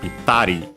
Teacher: low, high, high, and then low, the ri itself